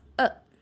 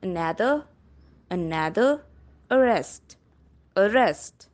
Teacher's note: It is open mid and close mid central unrounded vowel.